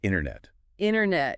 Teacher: Very often, especially in American English, that middle t sound after the n gets dropped or softened significantly